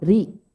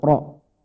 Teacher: Ro dibaca tebal, bunyinya medok kalau bahasa kita. Itu ketika berharokat fathah dan doma.